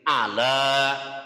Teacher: kalau makhrajnya ain itu di tenggorokan tengah. Makhraj artinya tempat keluarnya huruf A.